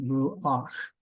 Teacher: We have ru, and then we pronounce the patak next, ruach. And so the syllable, the consonant is the last sound, ruach. We pronounce the patak before it. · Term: furtive patak